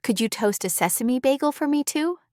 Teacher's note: You linked toast A and kept the rhythm easy.